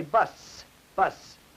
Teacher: in bus you will notice there is no buzzing on that s sound in bus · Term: voiceless sound